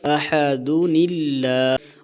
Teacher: جو لفظ اللہ کا لام ہے وہ بھی باریک ہو جائے گا، موٹا نہیں ہوگا، کیونکہ پھر نون ہوگا اس سے پہلے، اس نون کے نیچے زیر آئے گی تو اس نون کتنی کی وجہ سے اللہ کا لام بھی باریک ہو جائے گا اور تنوین ختم ہو جائے گی۔